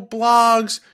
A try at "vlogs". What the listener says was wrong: Blogs? No, you said blogs with a B.